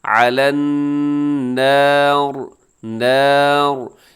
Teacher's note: اس میں کوشش کیے گا صرف را موٹی ہو، اس سے پہلے والے حرف موٹے نہ ہو جائیں ، نور نہیں کرنا بلکہ علی النار۔ آگے نیکسٹ آیت دیکھیے